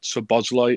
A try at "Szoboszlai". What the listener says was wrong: It's you're positive, but it's say it faster. Like don't say it like it's different words. It's Szoboszlai. So just one word.